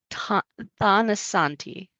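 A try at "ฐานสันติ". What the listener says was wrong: The T is aspirated. So it doesn't sound like a tha, it's a ta.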